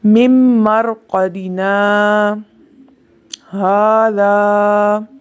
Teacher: मरक़दिना के बाद आवाज़ रुक गई और फिर हाजा की आवाज़ आई, लेकिन सांस जारी रहा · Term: सक्ता